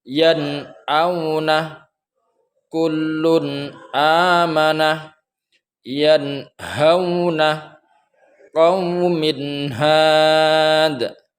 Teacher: Cara baca daripada idhar di sini ialah membaca suara nun mati atau tanwin ketika bertemu dengan salah satu huruf idhar yang 6 barusan ialah dibaca dengan terang, tidak boleh tertahan tanpa dengung.